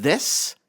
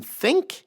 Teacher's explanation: Th as in this is voiced. Th as in think is voiceless.